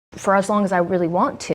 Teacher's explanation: We have only one T realized. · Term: Unreleased stops